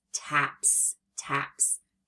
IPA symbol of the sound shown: s